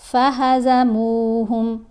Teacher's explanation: میم کو تھوڑا سا ہم نے کھینچ کر پڑھا، میم کے اوپر پیش ہے، ساتھ واو ساکن ہے، حرف مدہ ہے